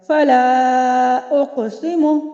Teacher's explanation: اگر ہم ملا کر پڑھ رہے ہیں، ٹھیک ہے، وسط کلام میں پڑھ رہے ہیں، تب بھی حمزہ قطعی پڑھا جا رہا ہے